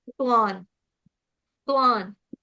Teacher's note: आधा त बना रहेगा। त्वा त्वा के ऊपर जो अनुस्वार है उसका उच्चारण करेंगे। क्या करेंगे? न से। हलंत न से।